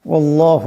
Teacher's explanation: করলে সাকিন হয়ে যাবে আল্লাহু এখানে আল্লাহর লামের ডানে জবর আছে আল্লাহর লামকে মোটা আওয়াজে পড়তে হবে